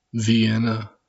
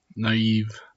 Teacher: there's a slight gap or space between the two vowel sounds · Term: hiatus